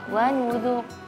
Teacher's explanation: Walaupun ra-nya tebal di situ benar, tapi nun dalnya tipis ya